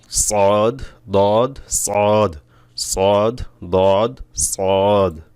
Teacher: সদ মোটা হবে অক্ষর একটা সিফাত মোটা করতে হবে জিহ্বার গোড়া উপরের দিকে উঠবে